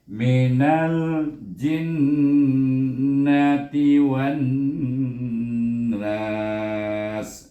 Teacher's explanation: Kemudian sin tu kita hamaskan dan mesti berdesir, itu safir.